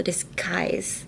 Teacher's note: And then disguise is also very hard because it's spelled with a G, but when you listen to it, it's like disguise. It's more like a K, so disguise.